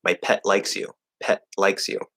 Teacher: I'm probably going to stop that T